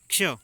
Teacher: क्ष की यदि बात करें तो उच्चारण करके आप देख लीजिए, इसमें पहले साउंड आ रही क की, फिर आ रही श की। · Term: संयुक्त व्यंजन